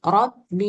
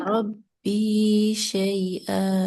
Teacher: Rabbi panjang ya, dua harkat.